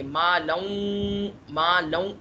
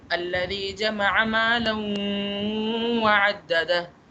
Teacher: اب ہوگا یوں کہ یہ ہے ادغام مع الغنہ۔ اب ہم دو زبر کو اگلے حرف میں ملائیں گے